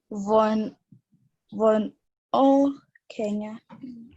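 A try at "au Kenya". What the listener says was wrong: Why are you saying Von? You must read the right way.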